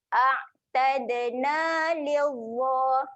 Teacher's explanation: Okay, kemudian tad. Huruf dal ketika mati sifat dia ada lantun. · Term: dal mati